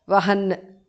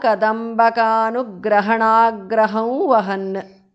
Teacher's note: Here the anuswara changes to the nasal of va.